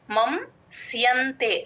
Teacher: స పక్కన సున్నా ఎన్ లాగా చెప్తాం